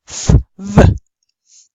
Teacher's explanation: We use our upper teeth and our lower lip, our upper labia and our lower dentis. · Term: Labiodental